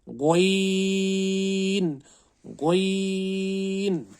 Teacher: गोइन और खा का मखरज सेम है, लेकिन खा में खुरदरी आवाज़ निकलती थी, गोइन में हमें कोई खुरदरी आवाज़ नहीं निकालनी है, साफ आवाज़ निकालनी है।